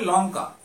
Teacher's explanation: লঙ্কার ক্ষেত্রে আমরা ল উচ্চারণ করেছিলাম সেখানে কিন্তু ল দন্তমূলে স্পর্শ করেছিল বা আমাদের জিহ্বা দন্তমূলে স্পর্শ করেছিল।